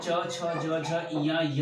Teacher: व्यंजन में च छ ज झ इया य और बड़े वाले स का उच्चारण जो होता है वह हमारे तालु से होता है, और इसका नाम जो है वह तालव्य है।